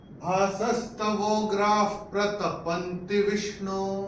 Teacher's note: गा के बाद विसर्ग के बाद का अक्षर है प, तो विसर्ग का उच्चारण होगा फ। तो आप ये विसर्ग को काट के अपनी किताब में ऐसे फ जैसे फूक मारते वैसे हो गया।